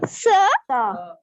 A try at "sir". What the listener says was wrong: Sir. Sa नहीं बोलना है, ये नहीं बोलना है. saying sir, sir.